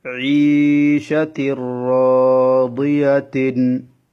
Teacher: তানউইনটা রর মধ্যে প্রবেশ করে গেছে, তানউইনটাকে গুন্না করতে হবে না, গুন্না ছাড়া পড়তে হবে। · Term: ইদগামে বেলা গুন্না